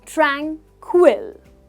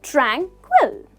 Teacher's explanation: the pronunciation is tranquil so we stress the first syllable